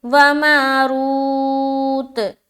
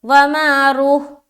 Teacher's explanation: جب لمبی تا ہو تو ہائے ساکینہ نہیں بنائیں گے بلکہ لمبی تا کو پورا ادا کریں گے